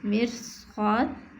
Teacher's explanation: صفات عارضہ بالصفت کی تعریف کہ صفت عارضہ کا سبب صفت لازمہ ہو تو اسے صفت عارضہ بالصفت کہتے ہیں، یعنی صفت عارضہ کا سبب صفت لازمہ ہو تو اسے صفت عارضہ بالصفت کہتے ہیں، جسے حرف کا پر ہونا بوجہ استعارہ کے، مثلا مرصاد، اس مثال میں را کو پر پڑھنا صاد کے استعارہ کی وجہ سے ہے